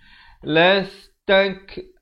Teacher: Ada bunyi angin sikit. Bunyi hamas itu.